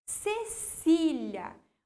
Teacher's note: O si, ali do meio, é a minha sílaba mais forte. Então, eu tenho uma paroxítona.